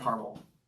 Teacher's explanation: I'm from the Midwest, so just a couple of schwa sounds.